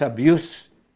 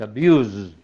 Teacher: abuse, termina por una S sorda y como maltrato es sustantivo, pero ya el verbo maltratar es con una S sonora